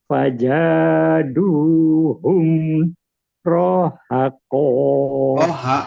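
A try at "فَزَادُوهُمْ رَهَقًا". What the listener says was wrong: Jangan rohnya jangan panjang. Fazaduhum rohako.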